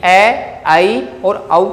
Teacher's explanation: अर्धविवृत स्वर कहलाते हैं, क्योंकि ए, आई और औ का उच्चारण करते समय जो आपका मुखावयव है, मुख की जो आकृति है, वो जैसे कि आ की अपेक्षा लगभग आधी खुलती है।